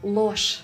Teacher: zh at the end of a word will be pronounced as sh.